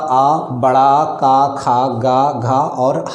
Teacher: तो कंठ है तो कंठ से आपका आ, बड़ा, का, खा, गा, घा और हा, हल, इनका सबका उच्चारण आपका कंठ से होगा